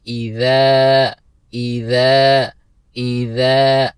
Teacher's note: ذال کو نرمی کے ساتھ ادا کرنا ہے اور کھینچنا ہے 2 حرکت کی مقدار کیونکہ ذال کے بعد الف حروف مدہ میں سے ہیں۔